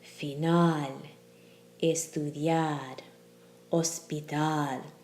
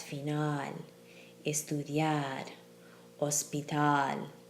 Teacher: the spoken stress falls on the LAST syllable